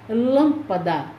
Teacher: nestas palavras a sílaba tônica é a antepenúltima então essas palavras são proparoxítonas · Médico, a sílaba tônica é me. Lâmpada, a sílaba tônica é lã.